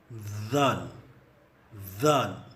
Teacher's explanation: பகுதி சார்ந்த TH நாவின் நிலைப்பாட்டில் நமது நாவு உதடுகளை தொடாமல் மேலே உள்ள முற்பற்களை மட்டுமே தொட்டிருக்கும்.